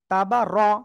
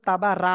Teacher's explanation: রর উপরে জবর রয়েছে, তাহলে রটা মোটা করে পড়তে হয়